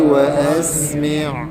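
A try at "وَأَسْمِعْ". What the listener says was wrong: Wa asmi'. Mim bawah mi ain. Kalau boleh kita kawal jadi mi jangan jadi mek tu macam mi tu tak cukup. Absir bihi wa asmi'. Kena kemaskan mi tu.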